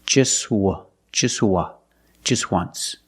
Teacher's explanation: We see the T is between consonants, so don't pronounce it. It's silent.